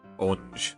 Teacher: some Americans say orange with just one syllable